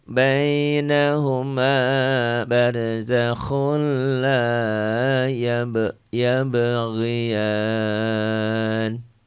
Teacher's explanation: Khun jadi khul, idgham bila gunnah ya.